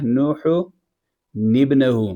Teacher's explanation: اس حا والی تنوین کو پہلے نون ساکن سے بدل دیا اور پھر نون ساکن کو زیر دے دیا